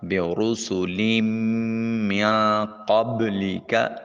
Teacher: نون ساکن کے بعد قاف حرف اخفا ہے، نون کو اپنے مخرج میں چھپاتے ہوئے ادا کریں گے۔ · لام کے نیچے تنوین ہے، 2 زیریں، اس کو میم کے ساتھ ملائیں گے، میم کے اوپر شد ہے، غنہ واجب ہوگا۔